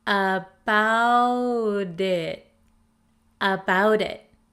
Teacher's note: the flap T in American English sounds like a soft D sound the t comes between the vowels in the word about and